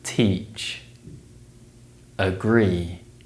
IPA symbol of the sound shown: iː